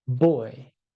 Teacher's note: when we say B in English as in boy it is voiced